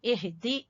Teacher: हा अक्सा हलक से, सबसे नीचे वाला जो हलक का हिस्सा है, एहदी, दाल को छोटा पढ़ेंगे और ना को लंबा करेंगे, लंबा नहीं करेंगे बल्कि अगर तो हम यहाँ रुके एहदीना तो फिर लंबा करेंगे लिफ मद्दा की वजह से, और अगर हम आगे मिला रहे हैं तो फिर लंबा नहीं होगा।